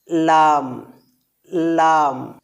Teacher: উপরের তালুর সাথে লাগিয়ে লাম বর্ণটি উচ্চারিত হয় লাম লাম অর্থাৎ ডান ও বাম উভয় পাশে জিহবার কিনারা থেকে জিহবার মাথার পুরো শেষ অংশকে সামনের উপরের দুই দাঁতের গোড়ায় ছোট টুকরার সাথে লাগিয়ে লাম বর্ণটি উচ্চারিত হয়